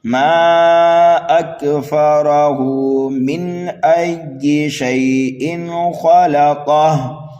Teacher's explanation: بالاسکان ہوگا، اس ہا کو ہم ساکن کر دیں گے، اکفرہ، اور ملا کر کے پڑھیں گے تو ہا کو کھینچیں گے ایک الف کے برابر